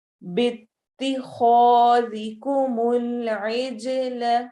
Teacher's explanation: خا الف مدہ بھی ہو رہا ہے الف کو موٹا بھی پڑھیں گے اور خا چونکہ سیٹی والے خا موٹے حروف میں سے ہے